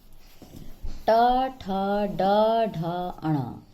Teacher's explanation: ट वर्ग मूर्धा से उच्चारित होते हैं